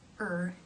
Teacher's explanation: the middle part of the tongue raises towards the roof of the mouth in the middle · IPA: ɜ